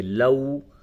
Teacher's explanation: یعنی اس واو کو نرمی کے ساتھ ادا کریں گے۔ لو، کھینچنا اسے ہے اور اسے نرمی کے ساتھ ادا کرنا ہے۔ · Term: واو لین